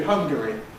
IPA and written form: ˈhʌŋgəri (Hungary)